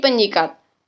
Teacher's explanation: fonem s pada kata sikat diluluhkan dan disenyawakan dengan fonem nasalnya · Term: Peluluhan fonem